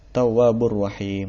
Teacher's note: Di sini ada tanwin bertemu dengan huruf ra. Berarti dia hukumnya adalah idgham bila gunnah.